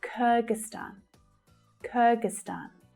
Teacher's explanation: So you'll see that the third syllable is the stressed syllable. But the first syllable is also quite strong, it's a secondary stress.